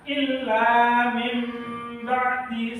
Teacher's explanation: Maksudnya nun atau nun mati atau tanwin yang bertemu dengan huruf ba, maka nun mati atau tanwinnya diganti dengan mim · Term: iqlab